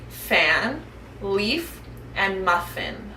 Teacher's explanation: blow quiet air out the front of our mouths this means our voice is off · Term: F sound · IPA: /f/